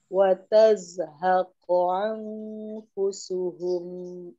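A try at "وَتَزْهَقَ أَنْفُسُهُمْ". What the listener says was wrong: Coba diulang, wa tazhaqu an-nya hamzah ya tadi ke bawah ke ain, jadi terdengarnya agak mirip ain. Wa tazhaqu an, seharusnya anfusuhum.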